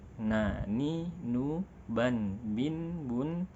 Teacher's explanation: Ketika kita melafalkan huruf nun, na, ni, nu, ban, bin, bun, sedikit nafas yang keluar dan bunyinya cenderung jelas, karena tidak banyak nafas yang menyamarkan bunyi huruf nun ini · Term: jahar